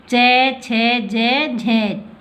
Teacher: जिन व्यंजनों में स्पर्श व संघर्ष दोनों की स्थिति पाई जाती है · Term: स्पर्श संघर्षी व्यंजन